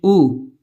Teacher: یہ مجہول ہے، اور الف پیش او یہ معروف ہے، تو پیش چھوٹا او کی آواز نکالتا ہے اور اس کو کھینچا نہیں جائے گا